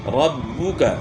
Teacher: را کو آپ نے با کے ساتھ ملانا ہے کیونکہ با کے اوپر شد ہے، اور شد والا حرف جو ہے وہ تھوڑا سخت پڑ جاتا ہے